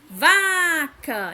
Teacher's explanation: tem tendência a pronunciar sílaba tônica com maior intensidade vaca então a gente já sabe que a sílaba tônica de vaca é o vá